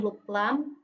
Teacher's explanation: konsonan lateral yaitu udara keluar dari sisi lidah